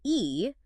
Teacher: open and your tongue is relaxed but if you say e your tongue moves forward and up towards the roof of your mouth that change in shape creates a different sound consonants though are